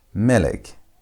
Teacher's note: You pronounce it by putting emphasis on the first part of the word, not the last part of the word.